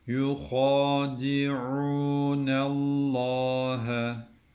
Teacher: Allah lafzından önceki harfin harekesi üstün, dikkat. Bu lamı kalın okuyacağız.